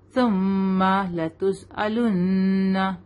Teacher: सुम्मा मीम पर गुन्ना करेंगे, नून पर गुन्ना करेंगे